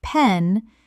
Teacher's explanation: When a native speaker says a word starting with P, like pen, they don't just open their lips. They build up air pressure behind the lips and then release it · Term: plosives